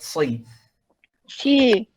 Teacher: sod itu seperti huruf sin persis, cuman dia bedanya ada sifat tafkhim. Tafkhim itu tebal.